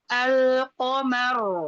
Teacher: sebelumnya huruf mim berharokat fathah, maka ro-nya dibaca tebal